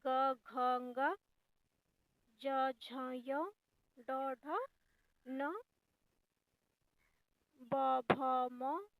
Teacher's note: ऐसे वर्ण जिसको बोलते समय कंपन उत्पन्न हो उसे हम लोग सघोष कहते हैं।